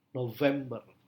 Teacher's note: kesulitan dalam mengucapkan bunyi Ve seperti yang kita sering dengar eh orang lebih sering mengucapkan November dengan dengan F padahal seharusnya dengan v